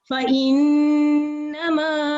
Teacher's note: یہاں پہ بھی ہم 2 سیکنڈ ذرا ٹائم لگائیں گے. نون کے اوپر تشدید ہے. نون مشدد پر بھی آواز لمبی ہوتی ہے